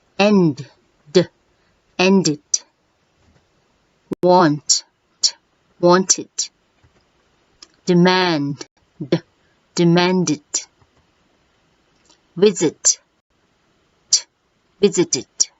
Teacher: it is read as id making an extra syllable